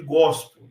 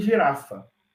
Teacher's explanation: Esse som é sempre oclusivo, é sempre o som de G, de gosto, nunca o som de G em girafa